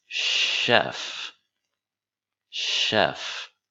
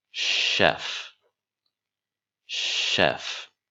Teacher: even though it starts with ch it does not make the sound it makes a Shh sound